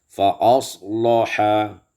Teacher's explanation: fa aslaha taghlidul lam, ditebalkan lam